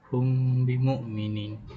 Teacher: Okey, untuk hukum yang pertama adalah ikhfa syafawi pada kalimah hum bimukminin iaitu huruf pertemuan antara huruf mim mati yang bertemu dengan huruf ba. Okey, cara bacaannya adalah dibaca samar dengan bibir sebanyak dengung yang harus dipertahankan selama dua harakat · cara bacaannya adalah dibaca samar dengan bibir sebanyak dengung yang harus dipertahankan selama 2 harakat